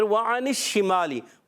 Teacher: واو کی ادائیگی ہوتی ہے ہونٹوں کی گولائی سے